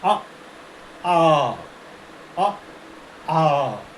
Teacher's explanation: अर्थात इसका उच्चारण ह्रस्व स्वर से दुगना होता है। जैसे ह्रस्व स्वर और ये दीर्घ स्वर अ आ अ आ दुगना समय लगता है